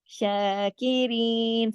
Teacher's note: شین کے اوپر کھڑی مد ہے، پورا کھینچا ہم نے اس کو اور سب کو باریک پڑھا